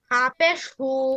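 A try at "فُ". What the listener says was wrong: আবার হা বলে ফা। হ্যাঁ, আপনি ফাকে শুধু কিন্তু হা বলে ফেলছেন, হু বলছেন, হা বলছেন। ফা ফা।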